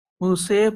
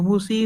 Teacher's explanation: امالہ سے مراد الف کو یا کی طرف مائل کرنا، مائل کریں گے، پورا ای نہیں پڑھیں گے، اے پڑھیں گے، ٹھیک ہے، موسے پڑھیں گے، موسی نہیں پڑھیں گے، ٹھیک ہے۔